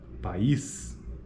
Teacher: cada vogal ocorre em uma sílaba distinta e cada vogal apresenta a qualidade vocálica específica específica neste caso dizemos que é um hiato É nesse caso